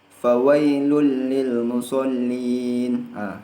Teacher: Idgham bila gunnah ini tidak memiliki dengung